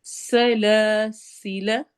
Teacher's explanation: सीन में सीटी वाली आवाज होती है · سین میں سیٹی والی آواز ہوتی ہے